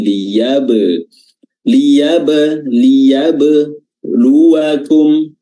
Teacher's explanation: Huruf ba-nya betul-betul harus diqalqalahkan, dipantulkan